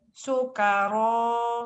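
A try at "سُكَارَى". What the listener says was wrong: Salah. Salah. Belum, itu Ibu terburu-buru. Soalnya lembut.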